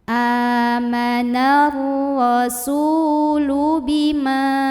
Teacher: Su mad tabi'i karena ada waw sukun yang sebelumnya didahului huruf berbaris dhammah. Maka huruf sin yang baris dhammah kita panjangkan dua harokat.